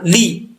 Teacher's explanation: زیر پڑھتے ہوئے لام کو لمبا نہیں کرنا